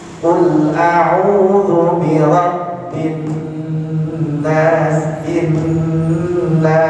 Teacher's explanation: di nunnya ini didengungkan berapa lama? 2 harokat, 2 ketukan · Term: gunnah